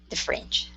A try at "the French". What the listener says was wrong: Good. One more time.